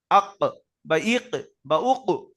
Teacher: কফের মাখরাজ, যে জীবের গোড়া ওপরে তালুতে লেগে উচ্চারণ হয়, শুধু এটা আমি আদায় করব, তো শুরুতে একটা হামজা লাগাবো, আর ওই যে অক্ষরটার মাখরাজ আদায় করবো সেটাকে সাকিন বানিয়ে দেবো। · পুরো জীবের গোড়া ওপরের তালুতে লেগে যাচ্ছে পুরো